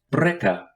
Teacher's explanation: it is a voiced bilabial stop pronounced just like the bee in birch and in transliteration is